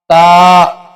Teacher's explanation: با دونوں ہونٹوں کے تر حصے سے ادا ہوتا ہے۔ با با، تا، یہ زبان کی نوک اور سامنے کے اوپر والے 2 دانتوں کی جڑ سے ادا ہوتا ہے۔ تا، سامنے کے جو اوپر والے 2 دانت ہے ان کی جڑوں سے ادا ہوتا ہے تا۔